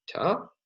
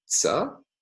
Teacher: in Japanese, we find alternations between an alveolar stop, ta, and an alveolar affricate, tsa.